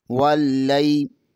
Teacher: واللی، لام زبر کو یا کے ساتھ ملائیں گے، لام زبر کے آگے یا ساکن ہے، یہاں پر یا لین ہوگا